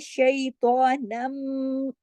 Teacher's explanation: तशदीद जहां पर आ जाती है ना, फौरन फिर तनवीन पीछे खत्म हो जाती है, नून जाके मीम में जुड़ेगा। क्यों? इसलिए कि मीम पर जो तशदीद है वो ये बता रही है कि तशदीद के अंदर नीचे दो हर्फ हैं। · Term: गुन्ना